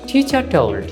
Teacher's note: যেহেতু আর এর পরে কি আছে? কনসোনেন্ট টি, এজন্য আর ইজ নট প্রনাউন্সড হিয়ার